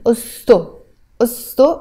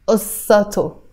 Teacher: And this a sound is kind of disappearing, so I'm saying osto, osto rather than ussato